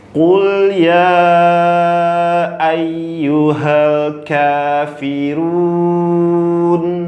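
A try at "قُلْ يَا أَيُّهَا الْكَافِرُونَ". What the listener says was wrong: Oke. Lulus ayat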